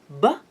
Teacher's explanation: it is clear that the flow of air is stopped by both my lips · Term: bilabial